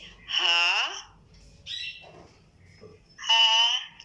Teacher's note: واو ہا ہا نہیں، ہا اقصی حلق سے ہے، ٹھیک ہے، سینے کے قریب والے حصے سے، اقصی حلق سے